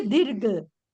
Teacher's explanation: दी दी छोटा हो जाएगा क्योंकि ये घ के ऊपर र संयुक्त अक्षर है।